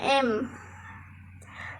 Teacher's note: bunyi nasal bunyi yang dikeluarkan melalui rongga hidung